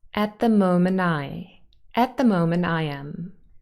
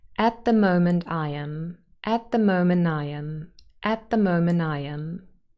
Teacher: moment very often will lose its final t